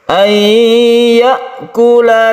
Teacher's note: Nun mati bertemu dengan ya, idgham bi gunnah, kita panjangkan, kita gunnahkan. Ayya, ya ada sukun hamzah bukan ain, ya.